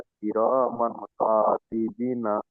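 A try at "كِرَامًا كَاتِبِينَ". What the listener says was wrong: বি টান হবে তো, ইয়া মাদ্দা। কিরামান কাতিবিনা।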